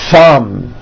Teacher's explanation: Notice how long I'm holding the TH sound. Thumb. It's not good enough just to put your tongue between your teeth and say a TH word like this.